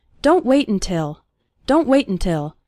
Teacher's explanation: when speaking fast the first syllable of until is barely pronounced